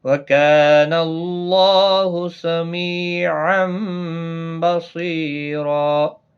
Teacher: وَكَانَ اللَّهُ کا الف مدہ ہے، ایک الف کی مقدار کے برابر کھینچیں گے۔ اللہ کا لام اس زبر کی وجہ سے پر پڑا جائے گا، اس کے اوپر کھڑی زبر بھی ہے، ایک الف کی مقدار کے برابر کھینچ کر بھی پڑھا جائے گا۔